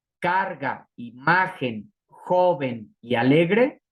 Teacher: son graves porque llevan su sílaba tónica, su fuerza, en la penúltima sílaba